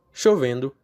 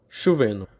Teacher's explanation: Apócope do D nos gerúndios.